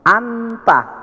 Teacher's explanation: Nun sukun itu berada pada gusi atas, sedangkan tak itu maju sedikit, pangkal gigi di atas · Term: ikhfa aqrab